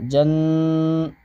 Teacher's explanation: نون کے اوپر تشدید ہے اس کو ہم غنہ کے ساتھ پڑھیں گے اور غنہ کی مقدار ایک الف ہوگی